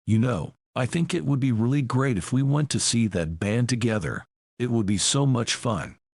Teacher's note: the embedded command is it would be so much fun which is delivered with a different intonation than the rest of the sentence